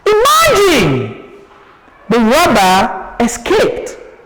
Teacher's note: So imagine we have a rise of our tone, the robber escaped, the tone goes down